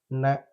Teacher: நாவின் நுனி மேல்வாய் அன்னத்தின் முன்பகுதியை தொடுவதால் நகரம் பிறைக்கின்றது